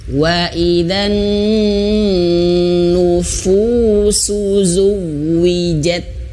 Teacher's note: Nah, sekali lagi perhatikan huruf fa-nya di sini ya. Huruf fa-nya harus benar-benar jangan sampai seperti pa, tapi fa ya, anginnya keluar.